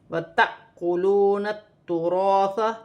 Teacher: الف پر جزم کی حرکت ہے، تو یہاں جھٹکے کے ساتھ پڑھا جائے گا · تا مشدد ہے، تُراث 2 مرتبہ جماؤ کے ساتھ پڑھا جائے گا، اور الف مدہ بھی بن رہا ہے، اسے 1 الف کی مقدار کھینچ کر بھی پڑھا جائے گا.